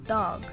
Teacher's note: For example, in English, the D phoneme is produced with the tongue tip making contact with the alveolar ridge, while in Spanish, the D phoneme is produced with the tongue tip making contact with the back of the upper central incisors. This would create a subtle difference in the production of the D phoneme for a Spanish-influenced English speaker, as they would produce the word dog, for example, dog.